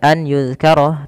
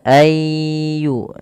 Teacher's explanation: Kemudian ayyuzkara, di sini pada lafal nun sukun bertemu ya, maka ini sama sebagaimana tadi yang kami sampaikan ketika nun mati bertemu mim, yaitu cara membacanya memasukkan nunnya kepada huruf setelahnya dan huruf setelahnya menjadi tasydid atau 2 huruf. Maka ayyu kemudian ditahan dengan gunnah sepanjang 2 harokat. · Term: idgham bi gunnah